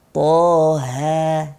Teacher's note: Karena di sini panjangnya 2 harokat. Kemudian haknya harus tipis. Namanya hak besar tapi dia punya sifat istifal, tipis ya.